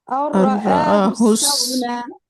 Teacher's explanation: تو اب یہ ہم کیا کر رہے ہیں کہ نون کو را کے اندر مرج کر رہے ہیں